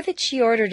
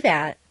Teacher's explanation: is a special case because it serves three different grammatical functions the relative pronoun and the conjunction are reducible the demonstrative pronoun cannot be reduced to a schwa